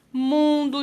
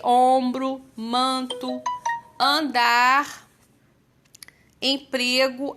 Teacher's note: parece que o sonzinho tá vibrando aqui no nosso nariz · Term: sons nasais